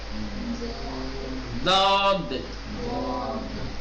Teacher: داہنے کی طرف کے کنارے کو داہنے کے اوپر کے دانت سے ملائیں، یا بائیں کنارے کو بائیں اوپر کے دانت سے ملائیں اور پرحجم بنا کر کے، موٹا بنا کر کے ادا کریں